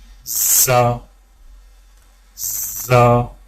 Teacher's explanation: زبان کی نوک کو سامنے والے نیچے کے 2 دانتوں کے کناروں سے مضبوطی سے لگا کر باریک اور سیٹی کی آواز میں پڑھیں